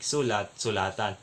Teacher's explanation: ang diin Ay lumipat sa ikalawang pantinig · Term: paglilipat ng diin, Paglilipat ng diin